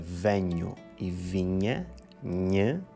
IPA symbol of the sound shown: ɲ